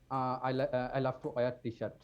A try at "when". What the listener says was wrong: When. So there's no H sound in there. I know when we write it, we write W-H-E-N, but when we pronounce, we say when. There's no H there.